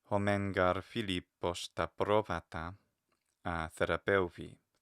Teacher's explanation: the final E is long. The epsilon iota is not a diphthong.